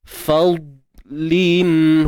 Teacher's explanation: huruf dad mati ataupun sukun kita tebalkan tapi jangan lantun. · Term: dad sukun